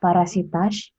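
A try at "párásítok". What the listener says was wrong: bukan parasitas, tapi parasitos. Kalau A tanpa coret itu O.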